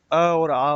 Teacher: अ और आ का उच्चारण आपको ध्यान रखना है, कहाँ से हो रहा है? कंठ से हो रहा है।